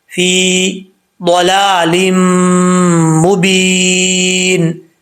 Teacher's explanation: ایک الف کی مقدار غنہ کریں گے، ضاد حروف مستعلیہ میں سے ہے، پر پڑھا جائے گا